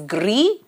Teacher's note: the s in the ending is not pronounced